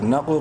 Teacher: قاف کو بولڈ کرتے ہوئے قلقلہ کریں گے